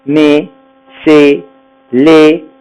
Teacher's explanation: On ne prononce pas le S, par contre le E se prononce fermé.